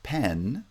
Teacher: less scenario than the p the thing to notice is that pen which is a one syllable word pen has the sonority start low it rises to the middle and then falls to the end there's a rising and falling pattern of sonority we sometimes call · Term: sonority peak